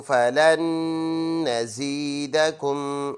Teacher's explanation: اب ان دو نونوں میں سے ایک نون پڑھیں گے، ایک سائلنٹ کریں گے. اس کی وجہ یہ ہے کہ دونوں نونوں پر جو نشانے ہیں، یعنی ایک پر سکون ہے، ایک پر شد ہے، یہ جب دونوں اکٹھے آ جائے تو جو سکون والا ورڈ ہے اس کو سائلنٹ کرنا ہوتا ہے. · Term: ادغام